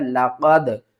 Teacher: قاف دال زبر قد، دال ساکن ہے، قلقلہ ہوگا، حروف قلقلہ میں سے ہے